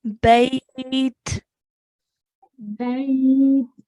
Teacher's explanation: Stretch the ya lean a little bit more.